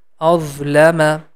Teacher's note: Letter dha, the tip of tongue is touching with the edges of frontal teeth, and this is also a heavy letter.